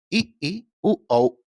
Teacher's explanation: जिसके उच्चारण के समय मुख द्वार सकरा हो जाता है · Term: समृत स्वर